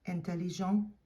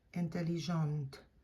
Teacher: that final T is not pronounced in the masculine form. You only hear it in the feminine form.